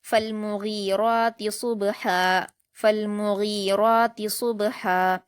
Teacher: صاد کو با سے ملا کر قلقلہ کے ساتھ پڑھیں گے